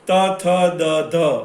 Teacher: ત, થ, દ, ધ તો એ દંત્યમાંથી નીકળે